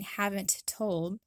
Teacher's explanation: we will often join them together for a single T sound as opposed to a double T sound. So instead of saying haven't told, we'll say haven't told.